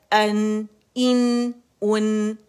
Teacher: یہ اقص الحل سے ادا ہو رہا ہے حمزہ